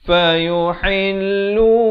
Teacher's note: ha pedas sekali lagi di pertengahan kerongkong.